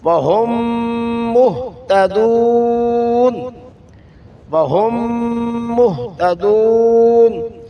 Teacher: آگے میم کا میم میں ادغام ہوا، میم مشدد ہو تو غنہ ضروری ہے